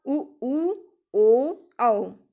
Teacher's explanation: बोलने में, उच्चारण करने में होठों का आधार गोल हो जाता है। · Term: वृत्ताकार स्वर